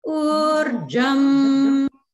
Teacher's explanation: And then again in Urjam, the jam goes down